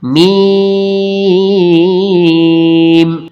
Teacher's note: میم کو ادا کرتے وقت شروع میں دونوں ہونٹ آپس میں ملیں گے، پھر جب ہم اس کو کھینچیں گے 5 الف کی مقدار کے برابر تو ہونٹوں میں تھوڑا فاصلہ ہوگا، اور اس کے بعد آخر میں پھر ہونٹ مل جائیں گے آپس میں، میم۔